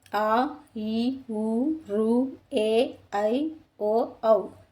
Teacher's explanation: రెండు మాత్రల కాలంలో ఉచ్చరించే అచ్చులను దీర్ఘాలు అంటారు. అవి ఆ, ఈ, ఊ, రు, ఏ, ఐ, ఓ, ఔ.